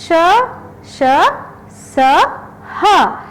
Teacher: गरम यानी कि जिन वर्णों पे उच्चारण करते समय मुख से हमारे गरम हवा बाहर निकलती है उनको ऊष्म व्यंजन कहा गया है। या फिर जिन व्यंजनों के उच्चारण के समय वायु मुख से रगड़ खाकर ऊष्मा पैदा करती है उन्हें ऊष्म व्यंजन कहा गया है।